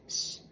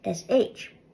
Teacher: a broad s in Irish sounds like a regular English s s and a slender s sounds like sh